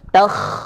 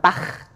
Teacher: hembusannya tentu kalau kha itu tebal atau tafkhim. Ya, karena sifat tebalnya tadi.